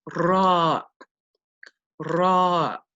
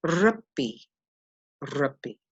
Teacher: The next letter is what we call ra, ra. It makes the r sound, and it has a slight rolling quality, very similar to the Spanish r